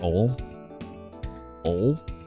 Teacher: Some of us don't pronounce the I in oil or other such words. So you just say like ol?